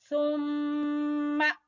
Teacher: سا زبان کے نوک اور اوپر والے سامنے والے دو دانتوں کے سرے سے۔ ثم شقق، قاف کے اوپر قلقلہ، شققنا الارض شقا، ہم نے یہاں پر نون کی جگہ پہ میم کی آواز نکالنی ہے، اس کو کہتے ہیں اقلاب۔